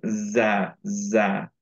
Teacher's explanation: জায়ের মাখরাজটা হচ্ছে সিনের মাখরাজে। দুই নিচের যে ইনসিসার্স গুলো, সেই ইনসিসার্স এর মাঝের পার্টে থাকবে টাংটা। ওকে, টাঙের টিকটা।